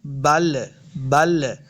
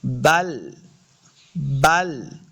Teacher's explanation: لام کو ساکن کرنا ہے، یعنی لام کے اوپر قلقلہ نہیں کریں گے